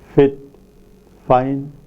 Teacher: Labiodental, produced with the lower lip and the upper teeth.